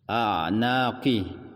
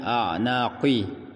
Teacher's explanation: ya qi huruf yang tebal qa, tapi ketika berbaris bawah atau berbaris kasrah maka sifat tebalnya ditipiskan sedikit